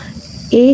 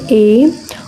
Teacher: ए जब बोलते हैं तो कंठ से निकलता है